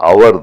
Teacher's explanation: அதை நான் அதனுடைய உச்சரிப்பு எப்படின்னா ஹவர் அப்படின்னு சொல்லக்கூடாது. HOURனுடைய உச்சரிப்பு ஹவர் இல்லை, அது வெறும் அவர் தான். அந்த ஹெச்னுடைய உச்சரிப்பு கிடையாது.